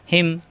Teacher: কন্ঠের শুরু থেকে কোন চাপ হবে না